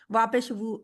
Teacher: वाव का मखरज क्या है, दोनों होंठों को गोल करके पढ़ा है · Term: होंठों की गोलाई